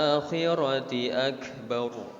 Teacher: Ra di lafaz akbar itu ra-nya ra tafhim atau ra tebal, ya. Maka bacanya harus tebal.